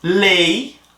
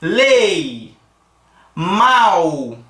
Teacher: lei e mal são decrescentes observa que a a pronúncia caiu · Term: ditongo oral